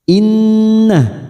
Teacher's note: nun yang bertasdid gunnah musaddadah, kita dengungkan, kita tahan selama 3 harokat